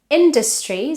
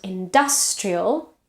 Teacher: there is a schwa in the second syllable, and industrial, the vowel changes because now it's stressed